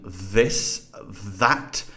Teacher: which is a dental fricative as in this that so here the tongue is coming between the teeth and air is coming between them because these are so close together that is causing friction which is making that sound so the friction makes the fricatives